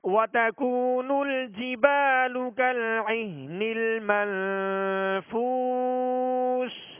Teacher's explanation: نون ساکن کے بعد فا حروف اخفا میں سے ہے، لہذا اخفا کا غنہ کریں گے. وَتَكُونُ الْجِبَالُ كَالْعِهْنِ الْمَنْفُوشِ.